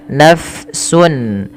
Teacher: Pada lafal nafsun, huruf fa harus dialirkan nafasnya. Ah, mengalirnya nafas di dalam bahasa, maaf di dalam kajian ilmu tajwid yaitu kita kenal dengan istilah sifatnya namanya hames, yaitu mengalirnya nafas. · tidak diganti pula dengan huruf P, tapi dia mengalir F ya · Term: hams